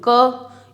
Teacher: अगर हम क बोलते हैं तो हमें कम प्राणवायु लगानी पड़ेगी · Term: अल्प प्राण